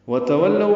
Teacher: واو تا جلدی ادا کریں گے، پھر واو کو لام سے ملائیں گے